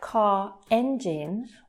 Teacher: when it's connected to a word that then begins with a vowel like car engine we would connect the two together and we would pronounce that r it would be an intruding r so